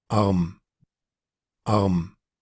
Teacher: esta vendría siendo con la R gutural y se escucha la aspiración al principio